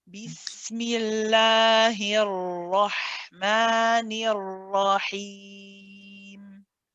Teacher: just the ra with the fatha onto both ra's, keeping it heavy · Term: ra heavy